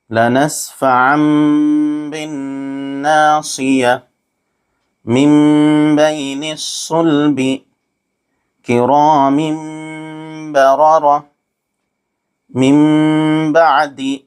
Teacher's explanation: نون کو میم سے بدل کر غنہ اور اخفا کے ساتھ پڑھیں گے، اس کو اقلاب کہتے ہیں۔